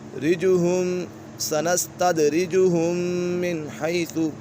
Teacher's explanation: میم مشدد ہے، میم مشدد میں ہمیشہ غنہ ہوتا ہے،